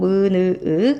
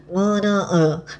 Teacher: 입안에 통로를 막고 코로 공기를 내보내면서 내는 소리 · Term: 비음